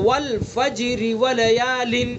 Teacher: اگر ہم نے وصل کیا تو را کو باریک پڑھیں گے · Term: را باریک